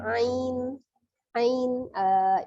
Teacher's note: Kemudian di bawah huruf dha ada huruf ain ya, dari tenggorokan bagian tengah ya, ain. Ain itu namanya madlin ya.